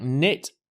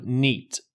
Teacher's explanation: Spanish speakers often extend the short e and make it into an e